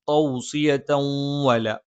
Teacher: ഇദ്ഗാം ബിഗുന്നയാണ്. തൻവീനിന് ശേഷമുള്ള വാവിലേക്ക് ചേർത്തോതും മണിച്ചുച്ചരിക്കുകയും ചെയ്യും.